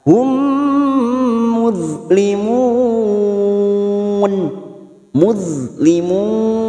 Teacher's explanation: harakat kita panjangkan Hum mim sukun bertemu mim Idam Mimi siap masuk pada huruf mim berikutnya dan mendengung selama dua atau tiga harakat